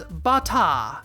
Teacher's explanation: extending that last vowel sound to approximate the er sound